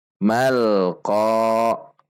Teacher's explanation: Selanjutnya mim fathah bertemu alif, namun karena di depannya ada alif lam qamariyah maka meskipun di sini ada alif tetap dibaca pendek dan langsung masuk ke alif lam qamariyah. Mal tidak memantul, tidak memanjang dan tidak dihentak.